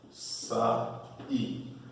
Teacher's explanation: Ele é o hiato, porque você tem a vogal A, a vogal I, estão separadas.